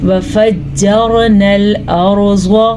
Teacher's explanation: अब मैंने दुरुस्त पढ़ा है, रॉ को पुर करके पढ़ा है। ज़्वाद हमेशा पुर पढ़ा जाता है।